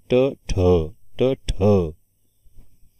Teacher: महाप्राण मिश्रित व्यंजन आहे कारण ट मध्ये ह मिसळला ठ ऐकू येते